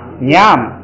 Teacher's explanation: 这个是调要降下来，读3声